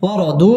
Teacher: মধ্য তাবাই এক আলিফ টানে পড়তে হবে